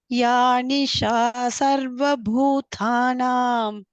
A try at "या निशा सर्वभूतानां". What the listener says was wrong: Not bhutha. Bhuta. Bhutanam.